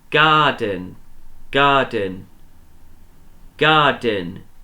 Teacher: the first syllable was stressed. It's the one that sounded louder and longer.